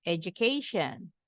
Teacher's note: ini huruf d-nya berubah bunyi Jadi j